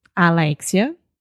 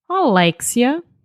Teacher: they have a closed vowel sound at the beginning